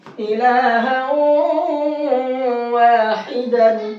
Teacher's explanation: تو جب تنوین کے بعد میں واو آیا تو اب اس تنوین کو واو میں کر دیں گے مکس، ادغام کر دیں گے اور ساتھ میں غنہ کریں گے